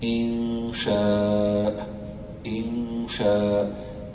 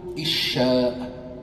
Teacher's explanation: It is the ghunna, the nasal sound that comes out from the nasal cavity.